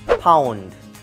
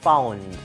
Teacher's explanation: We don't have F sound, but P sound. Pound rather than found.